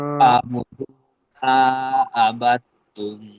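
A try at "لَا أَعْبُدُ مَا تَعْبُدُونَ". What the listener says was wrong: এখানে এটা আপনি আবার তুম বলছেন, এখানে হবে তা, তা বুদুন।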